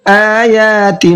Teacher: آیا دونوں کو کھینچنا ہے، آ کو بھی اور یا کو بھی، اس لیے کہ آ کے اوپر کھڑا زبر ہے اور یا کے اوپر بھی کھڑا زبر ہے، دونوں کو برابر کھینچنا ہے۔